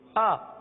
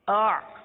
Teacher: حمزہ حلق کے نیچے والے حصے سے ادا ہوتا ہے, آئین اس سے اوپر والے حصے سے ادا ہوتا ہے. تو بہت فرق ہے, مخرج کا فرق ہے, آواز کا بھی فرق ہے.